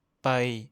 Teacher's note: Vous pouvez vous entraîner et vérifier si vous le prononcez correctement en mettant la main devant votre bouche. Vous ne devez pas sentir d'air qui en sort du tout. · Quand on le prononce, il faut faire attention de ne pas souffler d'air du tout. Seul le son sort de votre bouche. Vous pouvez vous entraîner et vérifier si vous le prononcez correctement en mettant la main devant votre bouche. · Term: P non aspiré